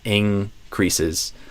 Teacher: In both of these cases, the N gets pulled back by the following back consonant sound. So K or G are both with the back of the tongue.